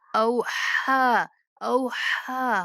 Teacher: تحدث أخبارها بأن غنہ کریں گے، ربک بأن ربک اوحا لها، اس ہا کو درمیان حلق سے ادا کریں گے